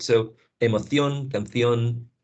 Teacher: Emoción, anything that ends in ción, they produce a theta, right?